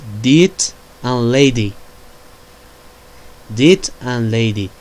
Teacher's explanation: Manner of articulation is stop. Place of articulation corresponding alveolar. The type of the voice is voiced.